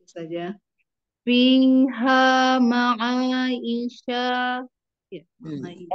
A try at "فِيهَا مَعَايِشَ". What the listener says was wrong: Pendek, pendek. Untuk panjang pendek.